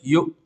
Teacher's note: جھٹکا اس لیے دے رہے ہیں کیونکہ حمزہ ساکنہ میں جھٹکا ہوتا ہے